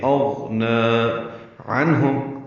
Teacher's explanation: اغنا میں غین پر ہے، نون کو 2 حرکات لمبا کریں گے. اغنا عنہم نون ساکن پہ اظہار ہے، عین وسط حلق سے ادا ہوگا، ہا اقصى حلق سے نکالیں گے